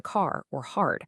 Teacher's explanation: General American is what we call a roidic accent, meaning speakers pronounce the R in all positions, like in car or hard.